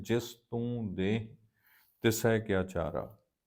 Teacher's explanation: ਆਪਾਂ ਇਸ ਦਾ ਉਚਾਰਨ ਕਰਾਂਗੇ ਦੇਹ ਨਾਸਕੀ। ਨਾਸਕੀ ਉਚਾਰਨ ਨੱਕ ਚੋਂ ਕਰਾਂਗੇ।